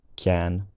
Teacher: descriptions of velars, k and g, becoming palatalized if followed by a vowel with the front tongue position